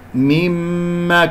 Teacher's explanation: نون مشددة، الغنة أكمل ما تكون